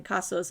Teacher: in casos, it's definitely an aspirated k